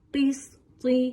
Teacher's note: قاف موٹا حرف ہے، حروف مستعلیہ میں سے ہے. طا بھی موٹا پڑھے جانے والا حرف ہے. دونوں کو پر پڑھیے، موٹا کر کے پڑھیے